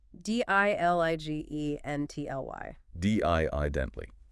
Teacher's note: 4 syllables. Stress on the first.